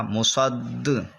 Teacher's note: یہاں پر قلقلہ جماؤ کے ساتھ ادا ہوگا کیونکہ حروف قلقلہ جب مشدد ہوں تو جماؤ ہوتا ہے